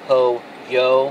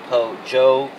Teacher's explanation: some people say po-yo for chicken, some people say po-jo for chicken, and for some people it's more of a blend